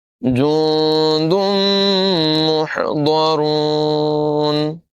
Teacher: نون ساکن کے بعد دال ہے، حروف اخفا میں سے اخفا کریں گے، غنہ کر کے پڑھیں گے